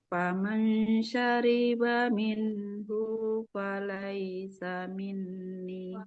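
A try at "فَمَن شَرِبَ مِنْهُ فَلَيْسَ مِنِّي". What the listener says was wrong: Nah, di minhunya haknya domah nggak ketemu waw, nggak boleh kita panjangkan. Faman syariba minhu falaysa minni.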